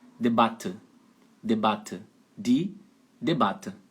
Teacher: de duas consoantes essa vogal é aberta e curta então aí a letra A uma vogal aberta e curta